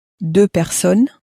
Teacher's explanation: even though there's two of them, we don't make the sound of an S at the end